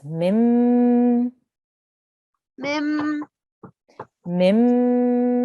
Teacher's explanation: Make sure we hold on the meme for 2 seconds.